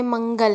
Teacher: म के साथ न का उच्चारण भी हो रहा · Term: अनुस्वर